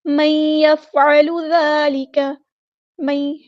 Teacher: نون ساکن کے بعد یا ہے تو ادغام مع الغنہ ہوگا